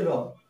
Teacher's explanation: এই র উচ্চারণ করার সময় দেখবে আমাদের জিভের অগ্রভাগ কম্পন করে দাঁতকে স্পর্শ করে, এর জন্য এটাকে বলা হয় কম্পিত ধ্বনি।